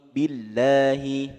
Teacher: ini lafaz Allah sebelumnya ini kasrah disebut dengan tarqiq ya, tipis